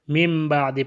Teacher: ایک تو نون جو ہے میم میں بدل گیا، اقلاب ہو گیا، اور اس کے بعد جو میم میں بدل گیا ہے وہ میم کے بعد حرف با ہے تو یہاں پہ اخفاء ہو جائے گا۔